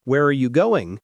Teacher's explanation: if you ask an information question like, Where are you going? your voice falls at the end.